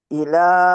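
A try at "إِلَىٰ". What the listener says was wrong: नहीं, इला को नहीं हमने लंबा करना, देखिए यहाँ हरफल मद के बाद हमजा नहीं है ना।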